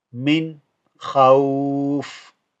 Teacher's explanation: I've not said over here a ghunna because kha is part of the throat character family. Okay, so we don't do a ghunna here.